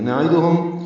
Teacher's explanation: نعیدہم عین وسط حلق سے ادا ہوگا. دال اور ہا معروف طریقے سے پڑھتے ہوئے ہا کو میم سے ملائیں گے.